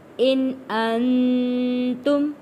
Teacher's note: یہاں تنوین پہ غنہ ادا نہیں کریں گے، اگلا لفظ حروف ہلکی ہے، نون ساکن پر بھی غنہ ادا نہیں کریں گے کیونکہ اگلا لفظ حروف ہلکی ہے۔